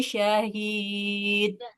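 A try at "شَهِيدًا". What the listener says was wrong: Nggak boleh dipantulkan. tanwin fathah bertemu alif, posisinya di akhir, panjangkan. Syahida. Bukan syahid. Khusus khusus tanwin fathah aja ya. Kalau di akhir dia tetap dipanjang, dibaca panjang. Syahida. Tidak boleh syahid.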